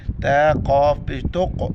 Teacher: قاف کو موٹا پڑھیں گے اور قاف کے اوپر جو قلقلہ کریں گے